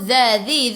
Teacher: Alladhi, tekan ke dalam lam, lam ada sabdu. Dhi, hujung lidah keluar pada gigi depan